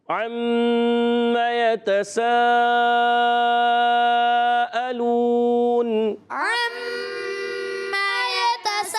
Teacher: good, پیارے بچوں اور مدنی چینل کے ناظرین، عما عین سے اسٹارٹ ہوتا ہے، عین ادا ہوتا ہے حلق کے درمیان والے حصے سے